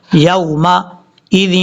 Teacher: یا کو جب واو سے ملائیں گے تو یہاں پر لمبا نہیں کرنا ہے، اس کو شارٹ کٹ کر پڑھنا ہے کیونکہ یہ واو لین ہے ، یومئذ، لال کو واو سے ملاتے ہوئے دو زیر کے